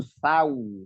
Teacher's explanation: ya Heeh itu dibacanya s a u Sau seitu jadi dengan dengan memonyongkan mulut huruf wau itu makharijulnya itu di kedua bibir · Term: Lin